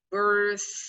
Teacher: a common word like birthday, you have to put emphasis on the birth, but also you have the sound again, like a little snake.